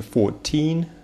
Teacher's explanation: здесь ударение на teen